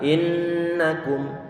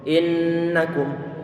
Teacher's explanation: perlu dipastikan di saat nun bertasydid, maka hidung ini selalu dalam keadaan gunnah, dan gunnahnya penahannya paling lama.